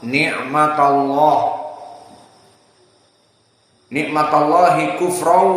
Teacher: Mufakhamah. Kenapa? Karena sebelumnya fathah ni'matallah. Kalau sebelumnya kasrah menjadi muraqqaqah seperti bismillah.